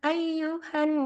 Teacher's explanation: Quran surah alhujurat ya ayyuhan Nun bertasjid itu contoh bacaan Gun cara membacanya adalah ditekan ditahan dua masuk ke hidung dengan dengung